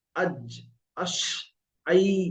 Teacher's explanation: আর ইয়া হলো আই, আওয়াজটা ধরে নিতে হবে, আই। দেখবেন জিভের মাঝখান সব উপরে তালুতে লেগে উচ্চারণ হচ্ছে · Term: জিম শিন ইয়া